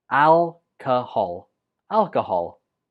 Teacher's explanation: And the stress goes on the first syllable.